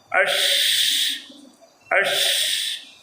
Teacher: شین کے ادا کرتے وقت پورے منہ کے اندر آواز پھیلے گی